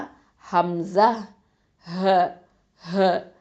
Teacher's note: அகசல் ஹல்க்குலேருந்து வரும், கீழ் தொண்டையிலேருந்து வரும்